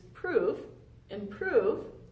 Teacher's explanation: I'm going to take the primary stressed syllable of improve, which is prove